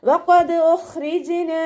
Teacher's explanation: വാ ഉച്ചരിക്കുന്ന സമയത്ത് ചുണ്ടുകളെ വട്ടത്തിൽ പിടിച്ചു കൊടുക്കുക. ഖാഫ് ഇസ്തിഅലാൻ്റെ ലെറ്റർ ആയതുകൊണ്ട് നാവിൻ്റെ ബേക്ക് മുകളിലേക്ക് പൊക്കി കൊടുക്കുക കേട്ടോ. ദാല് ഖൽഖല ലെറ്റർ ആയതുകൊണ്ട് സുക്കൂനാവുന്ന സമയത്ത് ഫുൾ സുക്കൂനിൻ്റെ സൗണ്ട് കൊടുക്കുക.